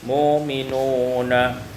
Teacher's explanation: ibdalul hamzati wawan tukar hamzah waw